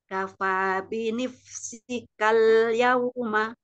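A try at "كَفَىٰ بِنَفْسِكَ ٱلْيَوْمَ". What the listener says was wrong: Binaf, bukan binif, tapi binaf.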